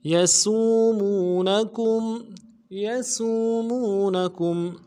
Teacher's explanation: کاف کو میم ساکن کے ساتھ ملانا ہے، میم ساکن میں غنہ کریں گے